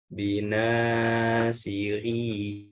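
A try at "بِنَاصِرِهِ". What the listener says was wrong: Ri-nya dibaca pendek. Bina. Binasirihi.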